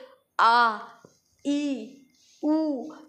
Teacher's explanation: इस दीर्घ स्वर के वर्णों के उच्चारण में दो गुना समय लगता है